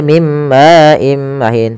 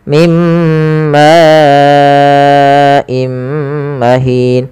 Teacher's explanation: Karena datang setelahnya hamzah, maka ini kita panjangkan sepanjang empat harakat. · Mad yang terjadi disebabkan karena adanya hamzah yang datang setelah huruf mad. Di sini ma awalnya 2 harokat, karena datang setelahnya hamzah, maka ini kita panjangkan sepanjang 4 harokat. Maka dan tidak boleh kurangi, tidak boleh mim ma'im mahin, tapi harus panjang 4. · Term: mad wajib muttasil